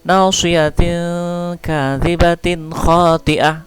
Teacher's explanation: tanwin ini bertemu kaf ya, kaf adalah huruf ikhfa, samar-samar cara bacanya